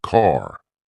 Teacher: American accent often uses a strong R sound. Words like car sound like car.